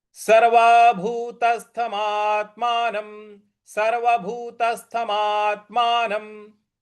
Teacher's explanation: देखिए, मां के बाद जो आधा त है उस पर हमको आघात देना है, बल लगाना है। और न के ऊपर जो अनुस्वार है उसका उच्चारण हम म में करेंगे, म के उच्चारण में करेंगे। तो ये पद बन रहा है आपका सर्वभूतस्थमात्मानम।